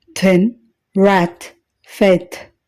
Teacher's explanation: ఈ శబ్దాన్ని ఉచ్చరించేటప్పుడు గొంతులో వోకల్ కార్డ్స్ కంపించకపోవడం గమనించవచ్చు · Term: అన్వాయిస్డ్